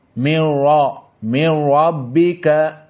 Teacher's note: Di mana kita mufakhamah? Pertama ra, karena fathah.